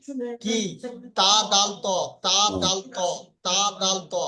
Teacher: জিহবার আগা এবং সামনের উপরে দুই দাঁতের গড়া লাগিয়ে উচ্চারিত হয়